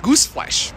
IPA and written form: ˈɡuːsfleʃ (gooseflesh)